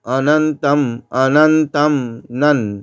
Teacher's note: এখানে অনুস্বরটা অর্ধেক ময়ের মতো উচ্চারণ হবে